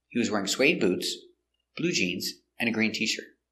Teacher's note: we stress important words verbs wearing and adjectives suede blue green